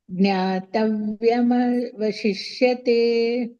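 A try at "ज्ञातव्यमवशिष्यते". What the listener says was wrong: ಅಲ್ಲಿ ಇಷ ಮೂರ್ದನಿಷ ಬರಬೇಕು ಪ್ರಾಕ್ಟೀಸ್ ಮಾಡಿ ಉಳಿದಿದ್ದೆಲ್ಲ ಸರಿ ಇತ್ತು ಮಾತಾಜಿ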